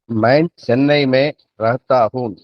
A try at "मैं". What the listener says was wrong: அதாவதுங்கய்யா இந்த ஒரு உச்சரிப்பையும் மாற்றம் பண்ணணும். நீங்க நான் அப்படின்னு சொல்றதுக்கு மே அப்படின்னு சொன்னா போதும். கடைசீட்டுல வர்ற இன்னு வந்து அழுத்தக்கூடாது. MAIN மேன்னு தான் இருக்கும். படிக்கும் பொழுது மெயின்னு தான் படிப்போம். ஆனா பேசும் பொழுது அந்த என் வந்து சைலண்ட் லெட்டர் ஆயிடும்.